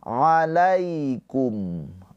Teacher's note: ada iya sukun sebelumnya harokatnya fathah, ini harfulin, maka cara bacanya dilembutkan.